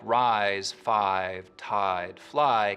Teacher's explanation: words like rise five tide fly keep their full eye diphthong